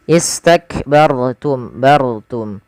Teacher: ra bila didahului dengan huruf fathah atau dhammah dia dibaca dengan tebal ketika ra sukun